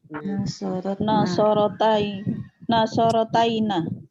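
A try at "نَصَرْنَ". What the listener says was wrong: Ya, pendek ya naknya ya, bukan panjang ya.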